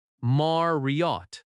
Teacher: Marriott has stress on Mar